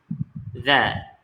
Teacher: Za ni lidah tu kena pada gigi hadapan gigi hadapan